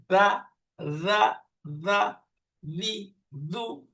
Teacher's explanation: জিহ্বার আগা উপরের দাঁতের আগার সাথে পারফেক্টলি লাগলেই নরম করে উচ্চারণ হবে